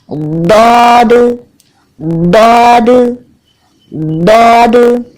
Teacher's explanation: जबान के मोटे किनारों को ऊपर के दाढ़ों की अंदरूनी हिस्से पे अच्छा सा लगाएं और अदा करें दौद दौद दौद।